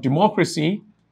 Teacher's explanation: you would realize that the stress falls on the MO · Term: stress syllable